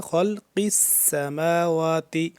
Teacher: سین کی سیٹی کی آواز سختی سے پڑھیں گے، سا سے جدا کر کے، سا ہوتا ہے نرمی سے پڑھتے ہیں اور سین تھوڑا سختی سے